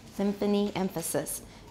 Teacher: you were making uh labiodental nasal